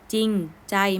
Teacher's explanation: ไม่ต้องออกเสียงเรืออันนี้ก็เป็นคำควบกล้ำที่ไม่แท้นะคะ